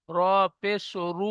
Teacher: র পেশ রু, মুখ গোল হবে, পুর। পুর মানে মোটা।